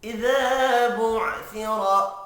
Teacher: बुअसिरा रॉ को पुर पढ़ना है ज़बर की वजह से